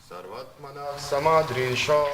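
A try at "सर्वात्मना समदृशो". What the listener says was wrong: Нет. You're changing the melody. Sarvatmana Samadrisho.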